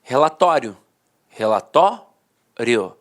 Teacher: a penúltima sílaba era a sílaba mais forte e a última de fato, perdia a força. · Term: paroxítona terminada em ditongo